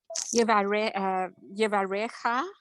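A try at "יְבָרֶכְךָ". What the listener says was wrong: Yevarechecha. You have to pronounce every letter. Shva. This shva when it's sounded has a sound of it.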